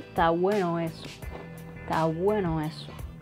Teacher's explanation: So I link the two vowels, o, e,